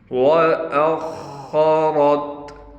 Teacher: خا کو موٹا کر کے پڑھیں گے، اس کے بعد را ہے، را کو بھی موٹا پڑھا جائے گا، اس حمزہ کو ہم خا سے ملا دیں گے۔